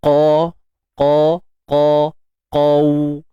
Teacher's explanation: Huruf isti'la, pangkal lidah kita pastikan terangkat. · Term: huruf qaf